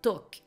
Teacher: dans lesquels les lettres ne se prononcent pas par exemple talk vous n'allez pas prononcer le l ce n'est pas talk c'est talk donc c'est sans l en